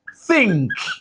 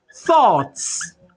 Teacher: always gotten well I have th and it is voiceless it is purely voiceless